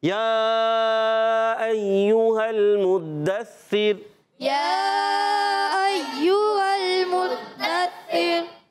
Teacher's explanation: रा साकिन से पहले ज़ेर आ जाए तो रा हो जाएगी बारीक